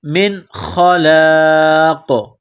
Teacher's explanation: من خلاق، یہاں پر جب سٹاپ کریں گے، وقف کریں گے تو قاف کو سائلنٹ کریں گے، قاف جب ساکن ہو جائے گی تو یہاں پر قلقلہ کریں گے